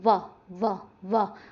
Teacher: अगर आपको फिर भी याद ना रहे या फिर आपको लगे कि भाई बहुत मुश्किल है, तो मेरा एक तरीका याद रखिएगा, जब भी पेपर में आए एक बार वहाँ पे बोल के देखना, जैसे व आ जाए, व व व, दांत आगे लग रहे हैं होठों पे आके तो ध्यान रखिएगा दंतोष्ठ है।